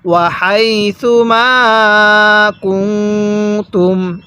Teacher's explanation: এখানে তুম এটা স্পষ্ট করে পড়তে হবে, আর নুনের মধ্যে গুনাহ করতে হবে।